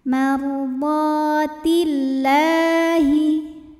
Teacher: Lam pada lafaz Allah atau lam jalalah dibunyikan secara tarqiq sebab huruf sebelumnya berbaris di bawah kasrah, maka cara bacanya ditipiskan jadi bunyinya lah.